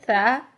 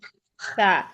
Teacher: तो यहाँ से अदा करें, जुबान की नोक को लगाएं सामने वाले ऊपर के दो दांतों के किनारों से।